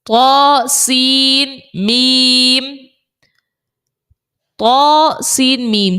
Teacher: ادغام مع الغنہ, غنہ بھی ہوگا کیونکہ میم میں غنہ بھی کرتے ہیں